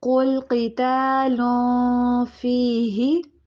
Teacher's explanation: لن اس کو نہیں پڑھنا بلکہ اخفا ہوگا، قل قتال فیہ، قاف کو بھی موٹا کریں دونوں جگہوں کے اوپر، قل میں بھی اور قتال میں بھی ، اور لون کے اوپر اخفا، فیہ میں ہا کی آواز